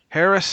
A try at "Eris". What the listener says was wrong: Eris. The H is silent.